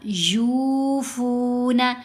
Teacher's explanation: यूफ बिन नजरी व फू यमा [संगीत] शहु मुस्तकीत यूफना या के ऊपर पेश साथ वाओ साकिन फ के ऊपर भी पेश साथ वाओ साकिन दोनों ये जगह पर वाओ मद्दा है तो दोनों की आवाज को हमने दो-दो हरकात की मिकदार लंबा किया